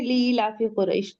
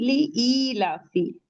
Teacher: لی لافی قریش نہیں، لی ای لافی، حمزہ یا زیر ای 2 کاؤنٹ پڑھیں گے اسے۔ اس کے بعد پھر لام پہ آپ کو ایک کھڑا زبر فتح مستقیمہ دکھ رہا ہے، اسے بھی 2 کاؤنٹ، تو کیسے ہو جائے گا لی ای لافی۔